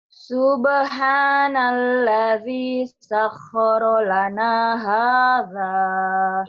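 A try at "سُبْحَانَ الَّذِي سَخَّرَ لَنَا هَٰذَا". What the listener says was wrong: jadi sahnya kurang ya, kurang nyamber. Coba latihan nyentak, cetak. Sakhkhara. Nah, ini seperti orang yang marah. Sakharolana. Nyambernya.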